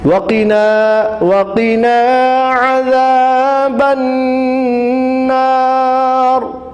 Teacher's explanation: وَقِنَا عَذَابَ النَّارِ، وَقِنَا میں قاف کو موٹا پڑھتے ہوئے وَقِنَا الف مدہ کو کھینچیے۔ عذاب النار میں عین کو صحیح سے نکالنا ہے، یعنی جہاں سے ہا نکلتی ہے گلے کے درمیان والے حصے سے۔ عذاب النار میں ایک حرف ذال بھی ہے جو زبان کو تھوڑا باہر نکال کر ادا کرنا ہے۔